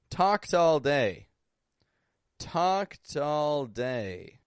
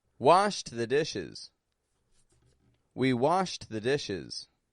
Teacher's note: voiceless endings Ed sounds like a te